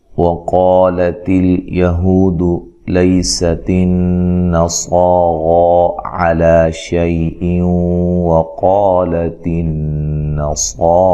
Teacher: واو کو ادا کرتے ہوئے ہونٹوں کو گول کرنا ہے اور زبر کو لمبا نہیں کرنا۔